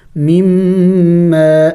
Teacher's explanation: میم مشدد ہے، غنہ کریں گے